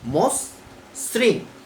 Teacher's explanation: যদি আদ্য অ এর পরে যদি রিকার থাকে তবে সেই অ এর উচ্চারণ ও এর মতো হবে